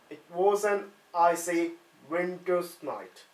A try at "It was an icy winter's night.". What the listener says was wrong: Now we're getting a slight wobble on the W there. So, again, I just want you to put the straw back in your mouth, and now I want you to say it on a whisper.